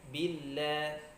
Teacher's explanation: huruf lam ini keluar dari ujung tepi lidah bertemu dengan gusi ya